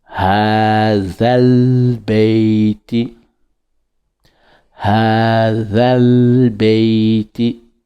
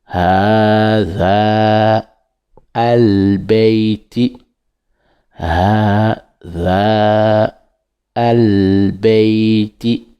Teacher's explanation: on dit hazal beiti, on fait la liaison